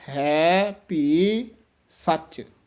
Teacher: ਕਈ ਅਣਜਾਣ ਹੈਪੀ ਕਹਿ ਜਾਂਦੇ ਹਨ, ਪੱਪਾ ਲਾ ਜਾਂਦੇ ਹਨ, ਪਰ ਵੱਖਰ ਸ਼ੁੱਧ ਉਚਾਰਨ ਹੈ ਭੀ ਸੱਚ